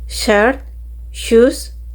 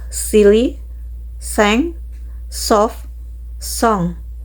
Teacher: The voicing is same sh and se are voiceless. · Sh and s are voiceless. Consonant sh is palato-alveolar, meaning they are made with placing the tongue blade close to the hard palate. And consonant s is alveolar, meaning they are made with the tip of the tongue touch the alveolar ridge.